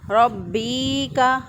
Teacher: یہ با جو ہے وہ کھینچا جا رہا ہے، با جو ہے وہ لمبا ہو رہا ہے